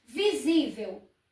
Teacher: A sílaba tônica é a penúltima, terminada em L. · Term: paroxítona